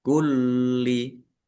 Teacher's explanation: Lamnya dibaca double, ada tasdidnya, ditekan dan ditahan biar tampak double.